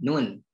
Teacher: huruf nun ini adalah huruf ghunnah yang berada di al khayshum